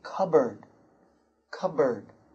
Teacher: So you don't pronounce the P in the middle. No P. Cupboard.